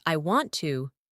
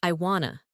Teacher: when a native speaker says, I want to, it often sounds like I wanna. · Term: reduction